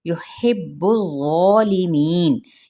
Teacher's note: با پہ سختی سے ادا کرتے ہوئے، سختی یعنی دبا کے ساتھ